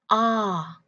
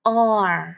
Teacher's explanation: Người Mỹ sẽ đọc là or. Người Mỹ sẽ hơi uốn lưỡi ở âm cuối hơn một chút. Vì vậy nên nếu bạn thích giọng Mỹ thì bạn phải luyện lưỡi cong hơn và dẻo hơn một chút ha.